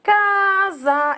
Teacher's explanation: a palavra casa a sílaba tônica é o ca casa é o cara se leva mais forte mas nem por